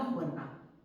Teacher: Pero en la versión andaluza, la R, lo que era originalmente una L, se convierte en R porque se asimila al punto de articulación de la G, eso no importa que lo recordéis, y esa H se acaba aspirando y acaba dando juerga